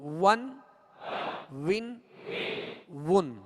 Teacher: دونوں ہونٹوں کی گولائی سے واو ادا ہوتا ہے